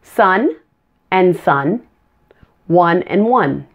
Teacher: Now here are a couple of common homophones with a short U sound. Short U is pronounced uh. It's also a relaxed vowel. Relax everything in your mouth and your tongue.